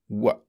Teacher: the sound /w/ is made with the two lips very rounded, pouted right out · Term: voiced bilabial approximant